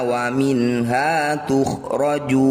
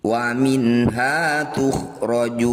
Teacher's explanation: wa minhaa tukhroju nun sukun bertemu ha disebut bacaan izhar halq bunyi Nun sukunnya dibaca jelas tidak usah dengung